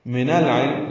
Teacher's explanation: من العلم لام ساکن پہ اظہار قمری، عین کی وجہ سے عین وسط حلق سے ادا کریں گے